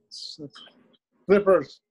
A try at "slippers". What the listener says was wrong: Very good. Slippers.